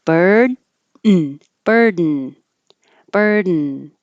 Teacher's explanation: more likely this is going to change to a syllabic N where the N becomes a syllable all by itself. Your tongue goes up for the D.